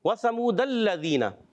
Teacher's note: اور واو ساکن سے پہلے پیش آیا، واو مدہ ہوگا، رفع مدہ کو 1 الف یعنی 2 حرکات کی مقدار کھینچ کر پڑھتے ہیں · یہاں لام مشدد ہے، ذرا رک کر ادا کریں گے